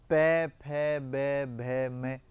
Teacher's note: अब पै वर्ग के सारे जितने भी वर्ण हैं पै फै बै भै मै, इनका उच्चारण करेंगे तो दोनों होठ आपस में चिपकते हैं। पै फै बै भै मै बोलेंगे तो दोनों होठों का योगदान होने के पश्चात ही ये पंक्ति बोली जा सकती है। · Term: ओष्ठे